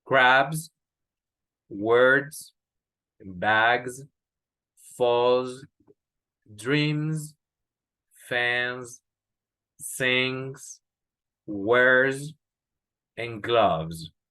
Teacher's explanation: Este sonido de S es el que les acabo de decir, que es Z.